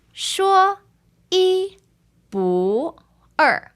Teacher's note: First tone, first tone, second tone after the tone change fourth tone.